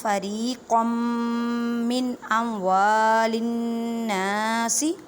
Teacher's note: نون مشدد گنہ کریں، نون کو ایک الف کی مقدار میں کھینچ کر پڑھیں